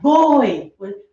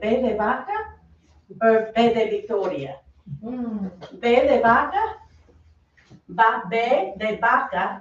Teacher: it's in between a b and a v and it's just bring your lip down a little bit to cover that explosion